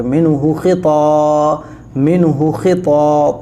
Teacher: تا موٹی کر کے، یعنی آگے کی طرف زبان نکلتی ہے موٹا ہو کے، منہ خطا، منہ خطا، تا موٹا کر کے پڑھا جاتا ہے، ٹھیک ہے نا۔